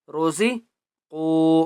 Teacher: را کو بھی موٹا کریں گے اور قاف کو بھی موٹا کر کے پڑھیں گے